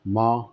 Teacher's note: نون جو ہوتا ہے اس کی آواز صاف ہوتی ہے، اور نون غنہ جو ہوتا ہے اس کی آواز ناک سے نکلتی ہے۔